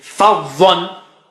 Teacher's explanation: Fa is low and dha is very thick and high.